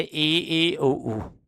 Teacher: मुख संवृत मतलब बंद हो जाता है, ऊपर और नीचे के दांत पास पास आ जाते हैं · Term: समृद्ध स्वर